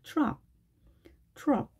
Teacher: 자, 트가 추처럼 들리기도 하는데요. 사실 그 중간에 어디쯤, 트와 츠의 중간에 어디쯤의 느낌으로 발음을 하셔야 됩니다.